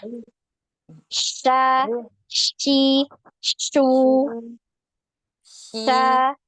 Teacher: Jadi tengah lidah naik ke langit-langit. Jadi bukan sin, tapi shin ya.